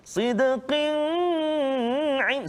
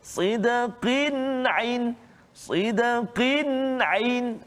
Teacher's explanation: Sidqin ain. Tu kan, tanwin bertemu dengan huruf ain. Maka kita tak boleh baca dengung kat situ. Sidqin ain, salah. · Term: izhar halqi, izhar